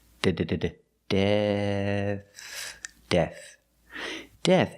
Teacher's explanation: the last sound is a th this is a voiceless th it's just air